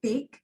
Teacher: oral passage is blocked by closing the lips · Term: stop